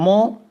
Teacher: मो पवर्ग में आता है, इसका ओष्ठ से होता है, ओष्ठ और नासिका से मिलता है। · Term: नासिक्य